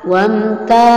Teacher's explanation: Ta, wamta namanya mad tabi'i atau mad asli karena ada fathah bertemu alif. Panjangnya 2 harokat atau 1 alif.